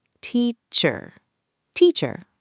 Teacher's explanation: the schwa sound, It's a very relaxed, lazy sound, like the A in teacher. You really need to relax your jaw.